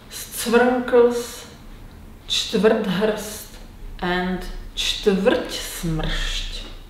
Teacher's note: In Czech, we can find two liquid consonants, the syllabic L and the rhotic R. As a result, there are plenty of words without vowels. For example, scvrnkls, čtvrthrst, and čtvrtsmršť.